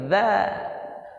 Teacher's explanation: Kalau dzal keluar lidah kita sedikit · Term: huruf dzal